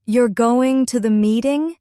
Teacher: if you stretch and emphasize the middle, it can sound like surprise. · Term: intonation